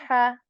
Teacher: this letter is articulated from the middle portion of throat